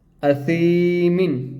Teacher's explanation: سا کو ہم نے ایک الف کے برابر کھینچ کر لمبا کر دیا